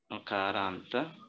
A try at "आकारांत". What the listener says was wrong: आ है, राइट, उसके एंड में आ है, not अ, that is अ bigger आ, right, अ आ ई, so the longer आ.